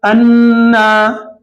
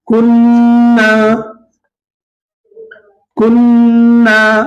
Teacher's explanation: یہاں پر نون مشدد آ گیا تو کھینچیں گے, انا کھینچتے ہوئے غنہ کریں گے